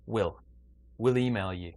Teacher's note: the e in we and the uh just gets pushed together